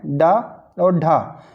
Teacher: ड और ढ ये तारन जात या उत्क्षिप्त व्यंजन कहे जाते हैं